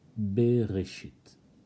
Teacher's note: You have the first letter, it's a bet, with a sheva. This sheva can be either silent or vocal. Here, it's at the beginning of the word, so it is vocal.